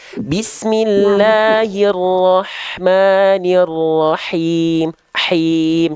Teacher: Rahmannya udah bagus, tapi himnya kurang berbisik. Ya, dilafalkan lebih dikuatkan lagi tengah tenggorokannya